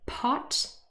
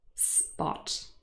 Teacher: spot it's a difference there's no aspiration in spot and so the first one we would say is aspirated and the second one is unaspirated